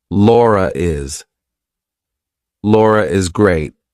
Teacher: So if I have to link my name to something else that's a vowel, I have to put an r in there. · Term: intrusive R